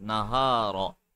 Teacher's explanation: Make the ha softer. You're making it sharp. Read it from the chest. نَهَارَ Let it loose.